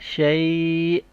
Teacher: اینڈ میں jerking sound ہوگا شیء